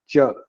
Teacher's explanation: When your tongue touches the front portion of your palate, then ch is pronounced.